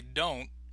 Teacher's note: The T itself, usually we stop on the T sound. So again, in North American English, we normally don't finish the T sound.